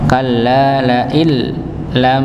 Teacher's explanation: sama sekali ya sama sekali tidak ada dengungnya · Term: tanpa dengung